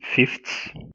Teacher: the dental th is changed into the stop t, because we have three fricatives, th, th, s, and by changing th into stop, the three become dissimilar. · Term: Dissimilation